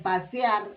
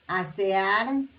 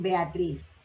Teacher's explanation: estas tres palabras tienen la mayor fuerza de voz en la última sílaba